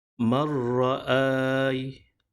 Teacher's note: Maka sebutannya ataupun bacaannya adalah marra'ai. Bunyi huruf nun dimasukkan kepada huruf ra, iaitu idgham, tetapi tidak gunnah, tidak dengung.